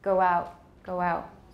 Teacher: we have a little linking W here